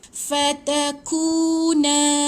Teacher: Ku tu panjang ada 2 harakat. Nun alif ada alif.